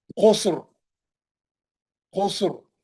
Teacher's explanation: सीन भी साकिन है, रा भी साकिन है, मोटा पड़ेंगे रा को, क्यों? तीसरे हर्फ पे पेश है, तीसरे हर्फ पे पेश है इसीलिए, है ना।